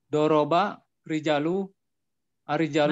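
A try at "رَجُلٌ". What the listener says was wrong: Mana rijal? Mana rijal? Enggak ada alif setelah jim. Rijal itu berarti ada alif setelah jim.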